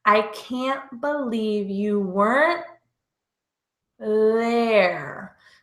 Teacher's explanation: my tongue moves from behind my top front teeth out in between my teeth for the th sound